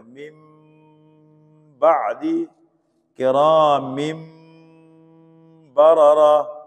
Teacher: اب من بعد میں دیکھو نون ساکن نہیں پڑھیں گے، اقلاب ہو گئے نا، یعنی اقلاب کا مطلب نون ساکن اور تنوین کو میم سے تبدیل کر کے پڑھیں گے۔ نون ساکن نہیں پڑھا جائے گا، اس کی جگہ میم ساکن پڑھا جائے گا۔